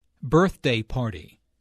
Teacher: the normal stress for a compound noun falls on the first element of the compound.